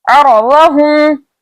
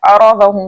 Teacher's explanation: ठीक है, इसके अलावा मजबूती और जमाव के साथ पढ़ा जाएगा। अरदहुम, आइन के ऊपर जबर है, बगैर खींचे बगैर झटका दिए मुतवस्सित तरीके से पढ़ा जाएगा। इसके अलावा वुस्ता हलक से पढ़ा जाएगा